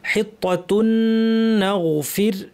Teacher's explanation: নুনের উপর তাসদিদ আছে লম্বা গুন্না, না গাইনের আওয়াজটা কিছুক্ষণ জারি থাকবে।